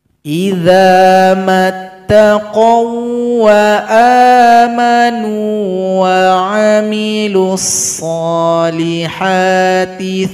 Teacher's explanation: waw yang berjumpa dengan waw tasydid ini maka tidak didengungkan